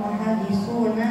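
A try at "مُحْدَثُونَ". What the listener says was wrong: Muhaddasun. Kalau muhaddis ahli hadis. Kalau muhaddasun berhadas.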